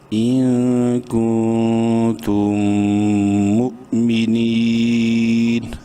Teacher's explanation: میم ساکن کے بعد میم ہے اور میم مشدد ہے، اس لیے اس میم میں بھی غنہ کریں گے ، اور پھر میم حمزہ پیش مو، جھٹکے سے پڑھیں گے،